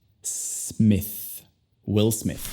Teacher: Es simplemente s. Luego, ya que la sílaba no es enfatizada, al escucharla, la vocal se convierte al sonido schwa. Y al final tenemos el sonido de TH.